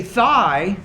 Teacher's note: a voiceless or a voice perspective so if I say thigh there's no vibration here in the vocal folds in my throat